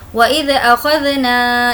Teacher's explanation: نا کو کھینچیں گے الف مدہ